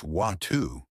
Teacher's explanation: In American English, people often say water like water. But in British English, it's watu. The T is softer. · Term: the T trick